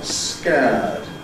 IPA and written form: skeəd (scared)